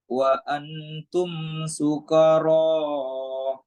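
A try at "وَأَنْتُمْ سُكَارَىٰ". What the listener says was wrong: Sukaro. Kayaknya 2 harokat. Wa antum sukaro.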